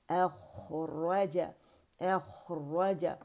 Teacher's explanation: را بھی مخفم ہے، خا بھی مخفم ہے، را میں جو ہے رخاوہ آواز چل رہی ہے اسے شو کریں گے